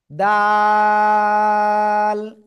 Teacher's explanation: জিহ্বার আগা উপরে দুই দাঁতের গোড়ায় লাগাবেন লাগিয়ে তিন আলিফ টেনে উচ্চারণ করতে হবে · জিহ্বার আগা সামনের উপরে দুই দাঁতের গোড়ায় লাগিয়ে একটু শক্ত আকারে উচ্চারণ করতে হবে